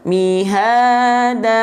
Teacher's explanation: Mad iwad dibaca 2 harokat